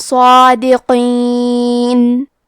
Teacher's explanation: حرف القاف کی ادائیگی زبان کے جڑ اور تالو کے نرم حصے سے ہے. قاف حروف التفخیم میں سے ہے، تو ہم یہ حرف کو موٹی آواز میں پڑھیں گے.